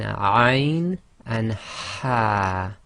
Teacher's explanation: So this Ha is what we call the forceful Ha, because you're exhaling a bit more forcefully and that air is being pushed out from the middle of your throat